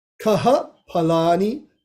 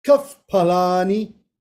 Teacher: Kaha palani becomes kaf palani. Okay, this is called Upadmaniya Visarga, where it's changed to a fa.